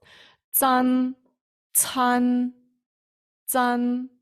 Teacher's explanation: тут ми маємо звук ц плюс х